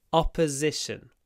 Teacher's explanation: it's really important to pronounce the stressed o with an open mouth